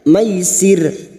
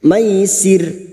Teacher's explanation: wakaf di sini untuk menyesuaikan kemampuan nafas kita maka bunyinya maisir ro yang dibaca wakaf yang didahului kasrah kita baca tarkik atau tipis